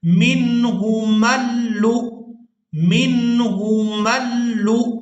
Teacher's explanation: लाम को हमजा साकिन के साथ इस तरह से मिलाएंगे, लाम हमजा पेश लु, झटके के साथ अदा करेंगे